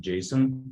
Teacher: with the stress on the first syllable